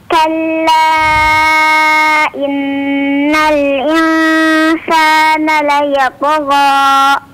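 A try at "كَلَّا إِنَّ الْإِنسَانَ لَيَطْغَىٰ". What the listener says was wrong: Afwan, ya ada kepanjangan ya, gha, ya kepanjangan 2 harakat saja ya. Ya tagha, gha.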